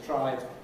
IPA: ˈtraɪɪŋ